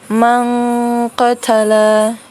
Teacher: nun sukun bertemu dengan qaf itu adalah ikhfa. Jadi cara bacanya itu didengungkan ya